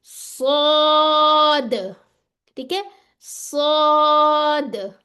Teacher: इसमें जबान की जड़ उठ जाएगी, यानी कि जबान की जड़ क्या होती है, जहां पीछे से स्टार्ट हो रही होती है, ये वाला। · एंड में दाल आ रही है तो इसका छोटी सी आप कह लें आवाज बाउंस होती है दाल की, क्योंकि उसमें कलकला है। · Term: मोटा लेटर